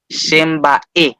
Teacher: la última vocal se pronuncia con mayor fuerza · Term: acento tónico